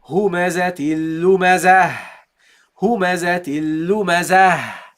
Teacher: the ta al-marbuta is a letter, a ta, that you pronounce at the end as a ha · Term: non-voweled ha